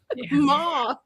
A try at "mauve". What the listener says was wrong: It sounds like you're saying moth.